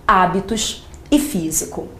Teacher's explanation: Observe que nessas palavras o acento está aparecendo na antepenúltima sílaba. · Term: proparoxítonas